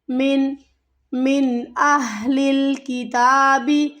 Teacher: اب یہاں پر نون ساکن کے بعد اگلا حرف حروف ہلکی ہے تو ہمیں یہاں پر اظہار ہوگا، یعنی کہ نون کی آواز کو ہمیں جلدی سے ادا کرنا ہے، غنہ نہیں ہوگا یہاں پہ